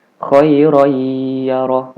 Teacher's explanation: harus dimasukkan kepada huruf y dandee digunakan khoiroyyaroh sepanjang dua harokat ditasydidkan sepanjang dua harokat · Ditasdidkan sepanjang 2 harokat. Nunnya nggak dibaca. Ya, harusnya kan dibacanya khairon yaroh, tapi ini hukum yang berlaku di sini adalah hukum idgham bigunnah, maka cara membacanya khairon yaroh. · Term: idgham bighunnah